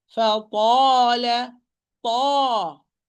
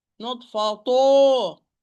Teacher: Epiglottis return, because this is a heavy alif. Not circling your lips. If you circle, you will give it a hint of the sound of the vowel.